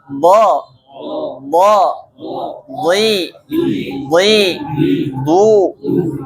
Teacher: Bo itu samping lidah bertemu dengan apa Pak? Gigi geraham bagian atas.